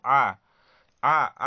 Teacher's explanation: आ में क्या है? अ से अधिक समय लग रहा है। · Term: दीर्घ स्वर